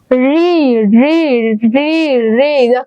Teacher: আমার জিহ্বাটা একদম মানে ভাজ হয়ে মাঝখানে চলে গিয়েছে